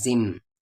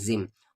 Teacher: سا میم آئے تو وہ اس میں مل جاتا ہے زم، اور یہاں پر غنہ ہوگا اور اس غنے کا نام اقلاب پڑے گا